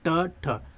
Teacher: अगर ट बोलेंगे तो आपकी जो जीभ के आगे का जो भाग है वो मुड़ जाता है, ट ठ, ठीक है। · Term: मूर्धन्य